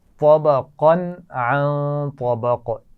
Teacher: طبقا عن طبق یہاں پر غنہ ہوگا کیونکہ نون ساکن کے بعد طا ہے. اور طبق طا موٹی پڑی جائے گی اور قاف پر قلقلہ ہوگا